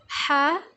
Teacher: ح وسط حلق سے یعنی کہ حلق کے درمیانی حصے سے